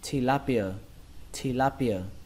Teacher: cái từ này thì trọng âm của nó rơi vào âm thứ hai, đó là âm la. Âm la trong từ la hét.